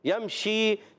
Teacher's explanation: یمشی, میم ساکن کا قاعدہ, میم پہ جہاں نون پر سکون آ جائے نون ساکن, جہاں میم پر سکون آ جائے میم ساکن, تو یمشی میں آ گیا میم ساکن کا قاعدہ. میم ساکن بعد شین آ رہا ہے, اظہار شفوی, غنہ نہیں کریں گے